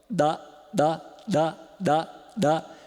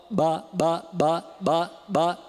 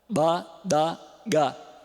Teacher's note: E posso fazer agora com ar faringal inspirado, ó, badagá. Esse é o implosivo, é com ar faringal inspirado.